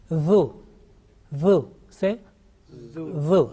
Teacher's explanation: tip of tongue is touching the front upper teeth, that edge, and you are pronouncing this one softly with thin sound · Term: Zal